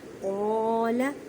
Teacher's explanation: قاف کو ادا کرتے وقت خیال رکھیں کہ کاف کی آواز نہ آئے کیونکہ یہ حروف مستعلیہ یعنی موٹے حروف میں سے ہے